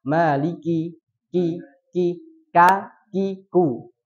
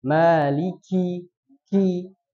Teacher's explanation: Tapi yang benar adalah menghidupkan hamsnya, yaitu dengan mendesiskan nafasnya. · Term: sifat hamas